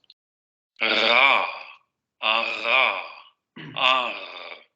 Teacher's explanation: lo que está vibrando es la úvula, porque la hacemos chocar contra la lengua, entonces esa campanilla comienza a generar esa vibración